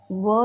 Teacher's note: दंत ओष्ठ यानी दंत दांत और ओंठ की मदद से व शब्द व वर्ण।